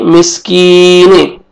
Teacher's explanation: काफ को बारीक पढ़ेंगे और या मद्दा है, या जज़म से पहले एक जेर है, आपने 1 अलिफ के बराबर यानी 1 सेकंड आपने खींचना है।